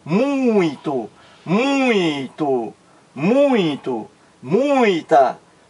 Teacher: o som ele ressoa não só na cavidade bucal como também na cavidade nasal